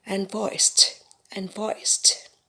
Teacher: For this word, unvoiced, the sound of the s and the t are blended together.